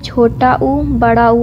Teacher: ओष्ठ से छोटा ऊ, बड़ा ऊ उच्चारित होता है।